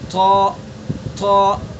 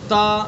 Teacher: طا منہ بھر کے ادا کریں گے، یعنی جو اوپر کا جو تالو ہے نا اس تالو سے زبان کو اس تالو سے چمٹا دیں گے